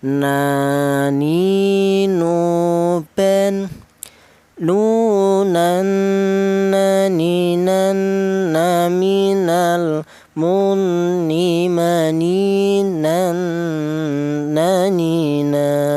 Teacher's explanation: keluarnya huruf berasal dari ujung lidah menyentuh langit-langit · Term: huruf nun